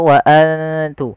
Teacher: Nah, tapi untuk huruf ta ini kita kita samarkan kepada makhraj ta-nya saja. Huruf ta itu kita keluarkan daripada perbatasan antara gigi atas kita dengan gusi atas. Jadi dia di tengah-tengah itu. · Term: ikhfa